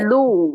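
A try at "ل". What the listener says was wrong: நீங்க லூன்னு சொல்லுங்க நாக்கு மேல படுது முரசுல படுது. பல்லிட பின்னு தான் படணும். பல்லிட பின் தொங்கல்ல படும் பல்லு தொங்கல்.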